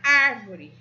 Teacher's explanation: A palavra árvore, a sílaba tônica é ar, e ela é a antepenúltima sílaba.